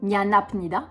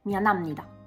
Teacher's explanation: On ne prononce pas en coréen Nyanapnida, on prononce Nyanamnida. Parce que le P devient un me.